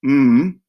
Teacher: this one is nasal meaning that it comes through the nose because the mouth is closed